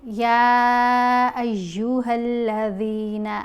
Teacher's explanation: ज़ाल को खींच कर पढ़ेंगे क्योंकि ज़ाल के नीचे ज़ेर है, साथ या साकिन है, तो ये हरफ मद्दा है।